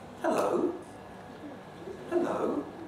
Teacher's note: if you're trying to reassure somebody in particular a child you can use a rise at the end